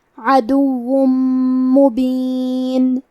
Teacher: میم حروف الادغام بغنہ میں سے ہے تو ہم تنوین کو میم میں ملا کے غنہ اور تشدید کے ساتھ یہ حکم کو ادا کریں گے